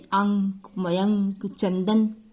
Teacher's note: अनुस्वार जो है ये स्वर के बाद आने वाला व्यंजन है। इसकी ध्वनि नाक से निकलती है, अतः इसे नासिक की व्यंजन भी कहते हैं।